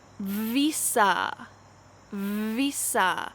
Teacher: make sure that your lips vibrate when you say this v